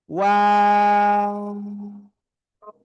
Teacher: এই যে অক্ষরটা, এই অক্ষরটা কোন জায়গা থেকে উচ্চারিত হবে? দুই ঠোঁট, শুরুতে গোল করব, মাঝখানে দুই দিকে প্রসারিত করব, শেষে এসে আবার গোল হবে।